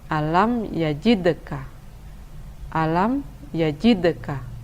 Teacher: karena berada di tengah kalimat maka ia dibaca dengan kurang mengeraskan qalqalahnya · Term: Qalqalah sugro